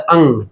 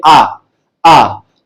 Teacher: अंग में हम नाक का सहारा लेकर के बोलते हैं।